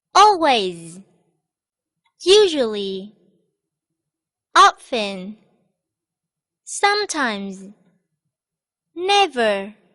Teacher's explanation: They are all adverbs of frequency which have the stress on the first syllable.